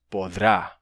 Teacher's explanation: Assim, do verbo poder, no futuro você teria, originalmente, poderá, só que em espanhol temos podrá, sem o E do meio